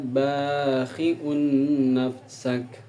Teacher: Ada tanwin bertemu dengan huruf nun di lapad bakhiun nafsak, yang mana harus dengan dengung, panjangnya 2 harakat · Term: idgham bigunnah